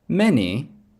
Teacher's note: That's going to be stress on the first syllable